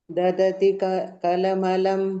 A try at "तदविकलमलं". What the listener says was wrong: தததி கிடையாது, ததவின்னு மாத்திக்கோங்க. தி இல்லை வி. மாத்திக்கோங்கோ, எல்லாருமே மாத்திக்கோங்கோ. தத் அவிகல அவி. தி இருந்ததுன்னா வீன்னு மாத்திக்கோங்கோ. ததவிகலமலம்